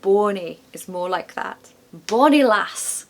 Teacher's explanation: Don't forget the short O in bonny in modern R.P. changes to or.